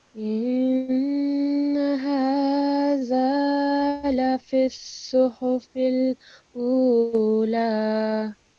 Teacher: It's a noon mushaddad, so you need to make a noon ghunna sound.